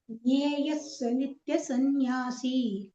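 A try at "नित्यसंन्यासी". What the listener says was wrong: சந்நியாசி அந்த தீர்க்கா வர இடமெல்லாம் இன்னும் கொஞ்சம் ரெண்டு மாத்திரம் எழுத்துக்கலாம், சரியா? கொஞ்சம் வந்து எலாங்கேட் பண்ணிக்கலாம்.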